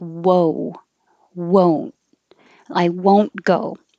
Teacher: keep your lips rounded the whole time so it sounds like whoa